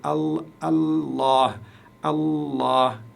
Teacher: vous devez prononcer le LaM la lettre L ici vous devez la prononcer longuement comme si vous comme si vous disiez comme ceci ici comme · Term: chedda